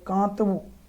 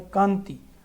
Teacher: કાંતવું ના કામાં હળવું અનુનાસિક ઉચ્ચારણ છે, જ્યારે કાંતિ ના કામાં સબળ અનુનાસિક ઉચ્ચારણ છે · ભાષાશાસ્ત્રની દ્રષ્ટિએ જોઈએ તો કાંતવુંમાં આ સ્વરનું અનુનાસિક ઉચ્ચારણ છે, જ્યારે કાંતિમાં આ પછી અનુનાસિક વ્યંજન ન છે. કાંતવું એ કાંતવુંમાં પોચો અનુસ્વાર છે અને કાંતિમાં તીવ્ર અનુસ્વાર છે.